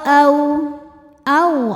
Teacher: Au, ada huruf lin. Sebab ada wau sukun didahului baris fathah. Maka dibacanya lembut.